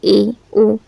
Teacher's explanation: जिन स्वरों के उच्चारण में मुख द्वार आधा बंद रहता है।